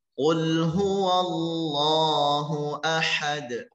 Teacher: Huruf dal termasuk huruf qalqalah dibaca mantul dan harus cepat.